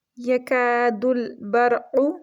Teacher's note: کاف کو منہ کی سائڈ سے پڑھیں گے، یہ باریک کاف ہے